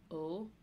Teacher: the umlaut above the o is like you shape your mouth like o but instead of going o it's like more open